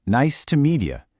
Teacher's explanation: Do you hear how that me and you kind of just smooshed together into media?